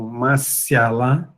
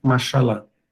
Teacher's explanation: depois dessas consoantes, um ya ou um i, a gente tem palatalização